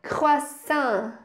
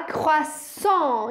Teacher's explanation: o AN vai ter um som diferente. Em francês ele vai ser nasalizado, vai ser fechado. Então a gente vai falar croissant e vai fechar a boca no final, tá?